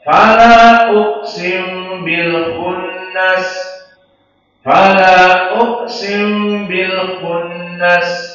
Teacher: antara mim dengan ba masih tetap dibaca mim meskipun sedikit